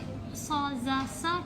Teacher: So bila kita sebut so, za, sa, kita punya hujung lidah dekat bahagian bawah gigi depan tu